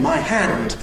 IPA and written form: maɪ ˈhænd (my hand)